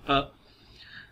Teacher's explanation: Jaw is half open relaxed, tongue and lips. Middle of the tongue is half way up. जो middle of the tongue है वो half way up होगी, ये आप picture में description में देख सकते हैं.